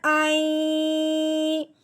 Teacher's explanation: تو اب درمیان میں آگے نون ساکن، نون ساکن درمیان میں ہو، آگے یا ہو شد والی، پھر حمزہ کو یا کے ساتھ ملاتے ہوئے اس پہ غنہ کرتے ہیں